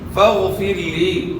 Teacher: غین کو موٹا ادا کرنا ہے, را ساکن سے پہلے زیر را کو باریک ادا کرنا ہے